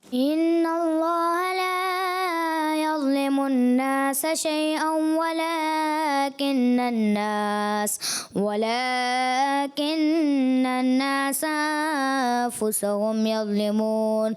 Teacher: لیکن بیٹا آپ نے ان اللہ شروع میں جو نون مشدد کا غنہ تھا اس میں کمی محسوس ہوئی